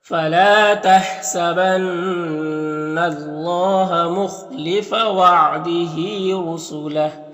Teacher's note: خا حروف مستعلیہ میں سے پر پڑھیں گے، ہاں میں کھڑی زیر ہے، یہ یا مدہ کی طرح ہوتا ہے تو اسے ایک الف کے برابر کھینچیں گے، را کو پر پیش ہے، را کو پر پڑھیں گے، یہاں پر جو ہاں میں الٹا پیش ہے یہ وقف کی صورت میں سکون سے بدل جائے گا، تو اس طرح سے پڑھیں گے۔ · وَإِن كَانَ مَكْرُهُمْ لِتَزُولَ مِنْهُ الْجِبَالُ، فلا میں الف مدہ ہے اور یہاں پر نون مشدد غنہ ہوگا، اور یہاں پر اللہ کے لام سے پہلے نون کے اوپر زبر ہے تو اللہ کے لام کو پر پڑھیں گے